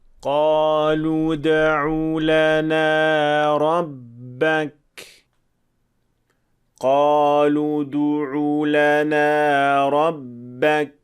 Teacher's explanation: تو جب حرف دال کو 2 پیش والے حروف کے درمیان ادا کیا جائے تو ہونٹوں کو بالکل پرسکون ہونا چاہیے، بغیر کسی او کی شکل کے۔